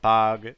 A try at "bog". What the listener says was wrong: open your mouth wider for the first one